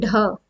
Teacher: यह ऐसे व्यंजन है जिनको बोलते समय हमारी जो जीभ है वह एकदम से किसी साइड को छटक जाती है · है किसी साइड को चली जाती है जैसे ड़ ड़ बोलेंगे तो हमारा जीभ में एक झटका सा लगता है या ढ ठीक है यह हमारे उत्क्षिप्त यानी छिटक हुए ऐसे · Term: उत्क्षिप्त व्यंजन